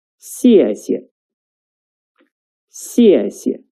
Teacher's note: The second 谢 is a neutral tone, which is short and light.